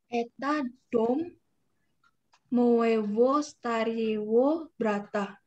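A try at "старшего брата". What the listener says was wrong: Starshi. Itu starshi. Bukan stare. Maibo starshevo brata.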